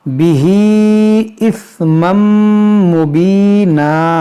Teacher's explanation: تنوین کے بعد میم ہے تو یہاں پر ادغام ہوگا, کیونکہ تنوین کے بعد حروف یرملون ہے.